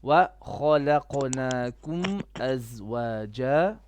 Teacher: Kha is heavy, Qaf is heavy, only the lam is flat.